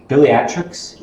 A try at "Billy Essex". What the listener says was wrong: Billy Essex. There's no T.